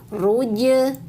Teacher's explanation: jimnya jangan buru-buru. Sukkan dulu atau diqalqalahkan. Ruje. Nah, naik naik tengah lidahnya tempel ke langit-langit mulut lalu lepaskan.